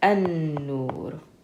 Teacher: So we said that letters that are min huruf shamsiyya, the sun letters, we pronounce them with a shadda. So we skip over this lam, and instead of saying al, we say an. So this would be pronounced an-nur.